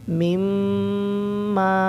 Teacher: तो यहाँ पर मीम मुशद्दिद का गुन्ना होगा